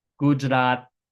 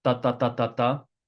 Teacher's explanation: Yeah, interdental, that's right. An interdental T, so we bite our teeth.